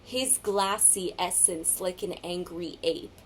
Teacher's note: in Angry Ape, we similarly get this very harsh glottal stop of the A · almost like a hiss-like sound of the repeated S's in those lines. You almost have to sneer in order to simply get those words out.